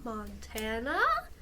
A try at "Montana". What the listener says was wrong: The way you said Montana, it was kind of squeaky at the end. Montana?